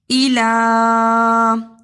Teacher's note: الا کے اوپر چھوٹی مد پڑی ہوئی ہے، اس لیے اسے ایک اور آدھی انگلی کے برابر لمبا کیا